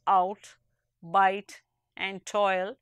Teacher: But if you say the words out, bite, and toil, you will hear that the vowel sound of each, though restricted to one syllable, is composed of two different kinds of sound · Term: diphthong